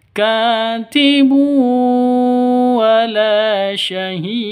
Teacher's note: Tanwin bertemu dengan wawu, masuk ke wawu, cara bacanya disertai dengung 2 ketukan karena idgham bi gunnah. Idgham bi gunnah itu idgham masuk bi gunnah dengan dengung.